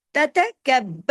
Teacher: बा को सख्ती से पढ़ना है क्यों बा पे तशदीद है बा डबल है